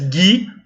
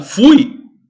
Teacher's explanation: Gui, o U não é pronunciado. Fui, o U é pronunciado. Aqui forma um ditongo.